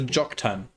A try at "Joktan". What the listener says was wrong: That's not a T.